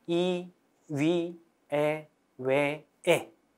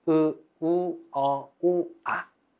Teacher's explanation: 앞쪽에서 발음되는 이 모음들을 전설 모음이라고 합니다. 혀가 앞에 있는 모음. 자, 뒤에 있다면 후설 모음. 혀가 뒤에 있는 모음.